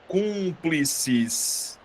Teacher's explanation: Se você perceber, eu acentuei a antepenúltima sílaba. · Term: proparoxítona